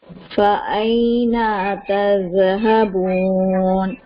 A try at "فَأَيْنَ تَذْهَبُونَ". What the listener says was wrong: دال شیک ہو رہا ہے. تذهبون، تھوڑا سا ٹائم دیجیے.